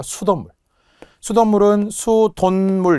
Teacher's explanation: 수돗물은 수돈물 이렇게 발음이 니은으로 나겠죠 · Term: 니은 발음